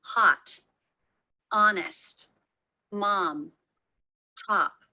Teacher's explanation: In American English, there are many words that have the letter O representing the ah as in father vowel.